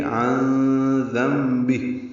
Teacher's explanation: عین وسط حلق سے ادا کرتے ہوئے نون ساکن پہ اخفا کریں گے